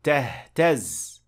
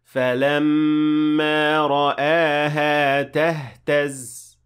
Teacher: The stress is on the last part of the word. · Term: nabr